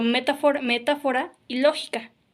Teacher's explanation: es la antepenúltima sílaba en donde se acentúa la palabra